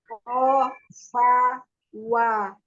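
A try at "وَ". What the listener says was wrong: Jangan ditebalkan. Iya, huruf waw itu ada di depan ya. Monyongin kedua bibirnya.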